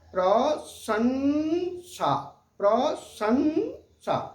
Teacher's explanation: थोड़ी देर के लिए मुंह बंद होता है और नाक से आवाज निकलती है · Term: अनुस्वार